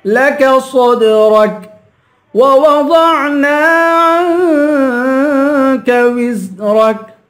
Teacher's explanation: را کو پر پڑھیں گے، آخر میں کاف ہے، اس کاف کی آواز نکال کے پڑھیں گے